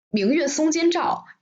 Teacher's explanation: it's like oblique, oblique, level, level, oblique